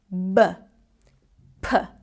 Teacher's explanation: I use my 2 lips to completely block the air and then completely release the air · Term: plosive sounds